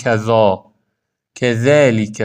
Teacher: کذالیک کلاً نازک و حالت فتحه میخونید